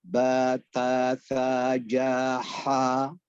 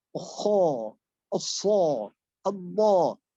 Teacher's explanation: Maksudnya istifal, lidah itu relatif lurus saat melafalkan setiap yang vokal A